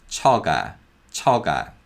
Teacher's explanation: 기역 becomes a voiced G sound as it comes after the vowel sound